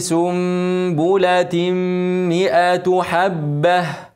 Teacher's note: التاء منونه بعدها ميم ادغام بغنه